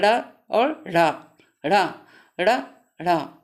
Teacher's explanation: जिन व्यंजनों के उच्चारण में जिह्वा की उल्टी हुई नोक तालू से छूकर झटके सट जाती है उन्हें उत्क्षिप्त व्यंजन कहते हैं